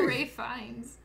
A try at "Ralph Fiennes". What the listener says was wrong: It's Ralph. But because, see, we did that before where I corrected you and said it's actually Ralph. But it's spelled like Ralph, but it's pronounced Rafe because he's Welsh, apparently.